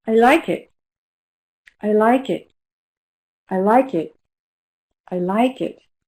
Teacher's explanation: The stress is on like.